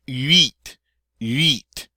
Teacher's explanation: until you really learn to make that U sound, it's going to come out sounding like wheat